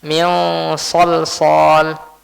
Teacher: Diikhfakan itu disembunyikan dan di sana pun ada gunahnya.